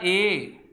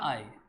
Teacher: कंठ और तालु, कंठ और तालु, अ ई क्या बनेगा, ए, और क्या बनेगा, आई। कंठ और तालु के योग से ध्वनि का निर्माण होता है, इसे बोलते हैं कंठ तालव्य ध्वनि